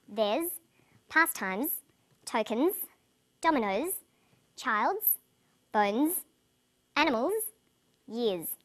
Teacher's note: after vowels and diphthongs, the final S is pronounced z